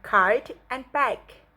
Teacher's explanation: Block airflow with the back of the tongue and against the soft palate.